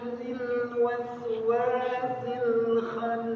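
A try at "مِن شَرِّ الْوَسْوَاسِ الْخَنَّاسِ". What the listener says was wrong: tinggal satu aja tambah sedikit tebal khya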